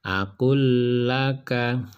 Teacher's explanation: Di sini ada lam mati bertemu dengan lam hidup. Maka menjadi atau dibaca akul laka. Ini didobel lamnya, ya. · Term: idgham mutamatsilain